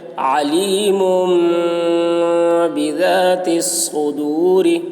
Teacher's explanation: تنوین کے بعد با آ رہا ہے اس لیے تنوین کو میم سے بدل کر غنہ اور اخفا کے ساتھ پڑھیں گے. اس کو اقلاب کہتے ہیں.